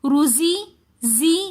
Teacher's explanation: زا سیٹی والے حروفوں میں سے ہے تو اس لیے ہم روزی زی زا کو تھوڑا سا سیٹی کے ساتھ اور سختی کے ساتھ پڑھیں گے